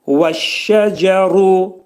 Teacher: Cə, burada dilimizdəki c hərfindən bir qədər yumuşaq deyilir.